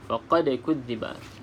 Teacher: Faqad kudziba huruf dal, salah satu daripada huruf qalqalah, maka kita lantunkan. Okey, kita lantunkan dengan lantunan yang sedikit. Faqad kudziba, kita lantunkan sedikit.